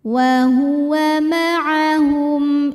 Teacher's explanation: karena mim sukun menghadapi huruf selain mim dan ba di sini hurufnya adalah huruf hamzah maka mim sukun dibunikan dengan jelas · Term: izhar syafawi